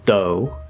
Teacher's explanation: if you use the dental t or d not the regular t or d you can say though as though not do